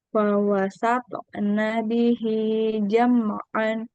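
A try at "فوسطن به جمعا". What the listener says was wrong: I-nya panjang.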